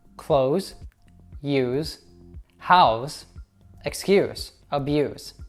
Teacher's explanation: the S in verbs tends to have a Z sound